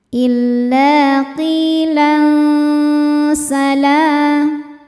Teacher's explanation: Berikutnya ada hukum ikhfa hakiki awsat karena ada tanwin fathah menghadapi huruf sin, maka bunyi tanwinnya samar-samar disertai dengung. · Lam atau bi'i muqaddar karena ada huruf lam dengan harokat fathah yang panjang. Cara bacanya panjang 2 harokat.